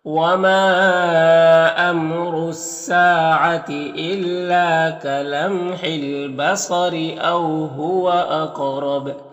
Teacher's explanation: یہاں پر وقف کریں گے تو با میں قلقلہ ہوگا